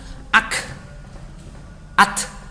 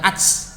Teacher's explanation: Ketika dia dibaca dengan sukun, maka yang keluar adalah udaranya saja, bukan suaranya. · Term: syiddah dan hamas